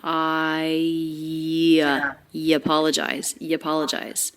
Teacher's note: right into the schwa of apologize in a link like this when it's an i diphthong linking into another word that begins with a vowel or diphthong you can think of connecting them with a y sound